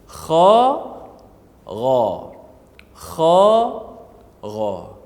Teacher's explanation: makhraj tempat keluar yang sama, iaitu hujung halqum, iaitu huruf kha dan huruf ghain